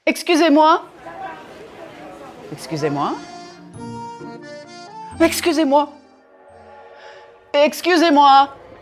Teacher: I never punched the words too much I didn't use a very wide range of pitch either